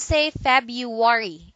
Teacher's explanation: we don't like two syllables in a succession with an R so some of us dumped the first one in this word